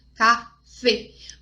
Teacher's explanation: Mas é um E fechado, para você não falar café